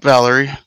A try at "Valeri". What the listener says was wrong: You're pronouncing it like it's an American name. It's not.